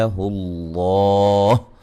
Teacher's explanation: لفظ اللہ کو خوب موٹا کریں گے، اس سے پہلے حرف پر پیش ہے